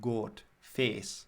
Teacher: so they become almost more like a monophthong